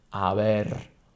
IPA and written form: aˈβ̞er (haber)